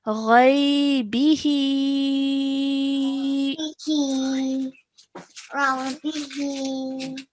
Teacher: Okay, and then over here we have the madd as-saghir on top of the ha, which means we have to stretch the he sound for at least 3 seconds. Okay, because it has a vertical kasra as well underneath it.